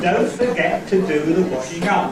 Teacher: The beginning of the first foot was the first syllable, don't. Then the beginning of the next foot was the second syllable of the word forget, so get.